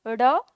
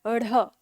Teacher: अगर हम परिभाषा की बात करें तो द्विगुण व्यंजन या उत्क्षिप्त व्यंजन में जब हम इनका उच्चारण करते हैं तो हमारी जीभ ऊपर उठकर मूर्धा को स्पर्श करती है और झटके के साथ नीचे आती है